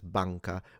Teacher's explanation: the N, like in the middle of words such as banca, which we do nasalize, but all other N's are fully pronounced, non in Italian, rather than non, for instance, which does sound French.